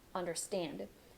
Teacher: last syllable is stressed